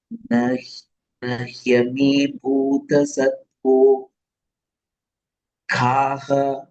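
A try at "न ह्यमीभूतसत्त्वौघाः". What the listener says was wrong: Satvau, not satvo. Satvau. Au ki matra. Satvaughah, not satvogha. Satvau.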